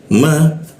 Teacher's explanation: ma, bibir bertemu bibir